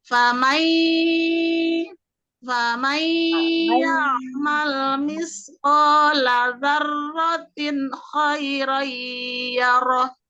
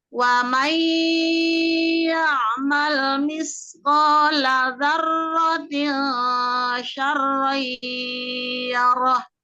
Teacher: Kemudian di ayat 7 di situ juga ada nun sukun bertemu ya, idgham bigunah, dibaca melebur ke huruf ya, ditahan dengungnya 3 harokat di rongga hidung merupakan tingkat gunah pertama.